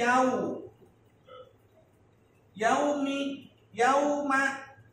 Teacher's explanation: Tapi huruf sebelumnya berharokat fathah. Waw mati yang didahului harokat fathah ini bukan huruf mad, tapi huruf lin.